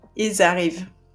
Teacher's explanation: this time you would have to connect with the Z